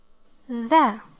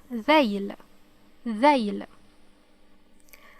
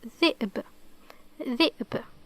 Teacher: this sound occurs as the tip of the tongue is pressed or passes through the upper and lower teeth slightly. When you exhale, you pronounce this letter. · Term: حرف الذال